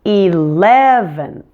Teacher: we have three syllables and we're going to stress the middle one on this one eleven and don't forget to move your tongue · Now 11th is quite similar to 7th, but in this case we have 3 syllables, and we're going to stress the middle one on this one